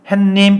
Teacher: 해님이라고 발음하지 않고요. 중간에다가 니은을 집어넣어요. 햇님 이렇게 발음한다고. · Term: 사이 소리